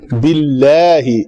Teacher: لام اس میں جلالہ کا ماقبل کسرہ کے ساتھ ہے تو لام پتلی پڑی جائے گی